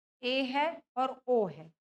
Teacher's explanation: अर्धसंवृत की बात करें, जिन स्वरों के उच्चारण में मुख द्वार आधा बंद रहता है